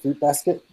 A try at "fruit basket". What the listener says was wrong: Did you say feet basket? Just add an RUIT. Pronounced it's fruit, but you pronounce it feet.